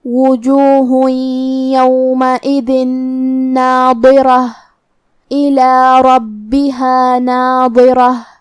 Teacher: ہم کلمت ناظرہ پہ رکیں گے تو تا پہ ہا سے رکیں گے